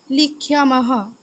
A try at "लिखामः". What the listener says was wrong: লিখ্যা নয়, লিখামহ।